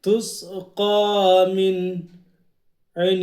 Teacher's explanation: تس قاف کھڑا زبر قا تس قا میم نون زیر من یہاں نون میں اظہار کریں گے اس لیے کہ نون ساکن کے بعد حروف حلقی کا عین آ رہا ہے